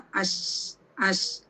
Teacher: കാറ്റ് പുറത്തുവരുന്ന ഹംസിന്റെ ലെറ്റർ ആണ് ഷീൻ. · ഷീന് പുറപ്പെടുന്ന സ്ഥലം നാവിന്റെ മധ്യത്തു നിന്നാണ്. നാവിന്റെ മധ്യഭാഗം തൊട്ട് മുകളിലുള്ള അണ്ണാക്ക്.